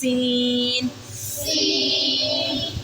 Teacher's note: और सौद जो है वो अपने मखरज से अदा होगा, सीटीज़ की आवाज़ होगी, लेकिन वो मोटा अदा होगा।